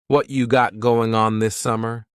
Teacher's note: What cha is what plus you. You becomes cha.